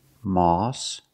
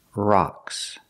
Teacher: Moss has the aw sound, like saw and call. And rocks has the open ah sound, like hot and stop.